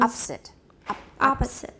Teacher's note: there's no vowel there at all yeah the schwa disappeared